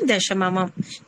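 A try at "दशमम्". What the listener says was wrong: దశమమం కాదు, దశమం. ఒక్క నిమిషం, మీకు దశమి ఒక్కదానికే మమ వచ్చింది, ఎందుకంటే దానికి దశమికి ఉంది కాబట్టి, ఓకేనా. దశమికి ఆల్రెడీ మా ఉంది కాబట్టి దశమం అని వచ్చింది.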